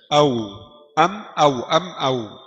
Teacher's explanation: Waw bulat dua bibir. Ada celah, furjah.